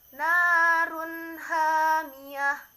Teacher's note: ada domah tain bertemu dengan huruf h, masuk ke dalam bacaan idhar. Cara membacanya jelas.